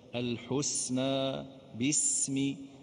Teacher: ننتبه إلى السين الساكنة، ليست حرفا شديدا، فما نقولش الحسنى باسم، الحسنى خلي الهواء ينساب، الحسنى باسم.